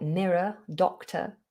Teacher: any word that ends with an er or an or like mirror doctor we have that schwa sound